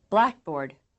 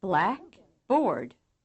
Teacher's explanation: in accent two words the second syllable is almost as loud as the first